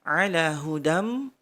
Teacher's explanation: fathah tanwin bertemu mim, hudam didengung 3